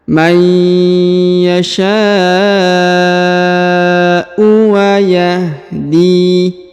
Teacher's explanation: huruf sya dipanjangkan 5 harokat karena di atasnya terdapat tanda bacaan panjang 5 harokat yang ini ya.